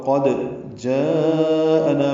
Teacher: قاف پر پڑھیں گے، دال ساکن پہ قلقلہ ہوگا. قد جاءنا میں مد متصل ہے، الف مدہ کے بعد حمزہ ایک ہی کلمے میں ہے، نا الف مدہ ہے، دو حرکات لمبا ہے.